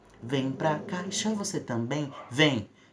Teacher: essa repetição desse som em, que é uma vogal, nasal, mas vogal, na verdade duas, né? Um ditongo vocálico nasalizado, em, isso também contribui para a propaganda.